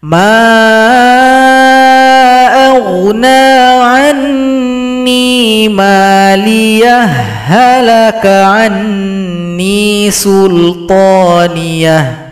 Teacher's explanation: Karena ada ha sukun berjumpa dengan ha maka idgham harus dilebur.